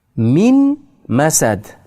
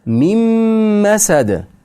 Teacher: Mim harfini ichiga kirgizib o'qilinadi. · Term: idg'om